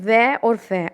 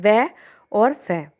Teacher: दंत प्लस ओष्ठ में व और फ, आप इसको बोलकर देख सकते हैं, व और फ आप बोलेंगे तो दांत, जो आपके होठ हैं और दांत आपस में मिलेंगे